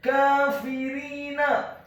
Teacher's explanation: huruf kafnya dibaca tipis, tarqiq, fathah 2 harokat karena harokatnya tegak, dan atau setelahnya ada huruf alif.